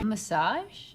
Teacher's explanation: make the open a sound like hot and stop plus the z sound together